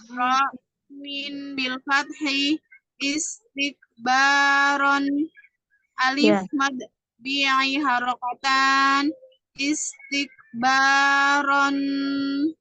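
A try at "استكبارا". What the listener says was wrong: Kepanjangan banyak panjang. Istikbaron, jangan panjang-panjang.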